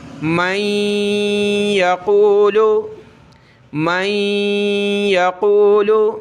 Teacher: نون ساکن ہے یعنی نون کے اوپر ہی جزم تو نون ساکن، اس کے بعد یا آ جائے تو یہاں بھی ہم نے غنہ کرے یعنی ناک میں آواز پیدا کریں گے، جس کو اخفا کہتے ہیں.